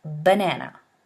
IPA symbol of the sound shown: b